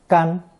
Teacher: it's pronounced first tone